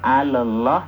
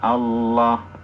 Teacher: alnya tidak nampak melebur ke huruf syamsiahnya Jadi bukan alah tapi langsung Allah alnya enggak ada Al Il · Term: idgham Syamsi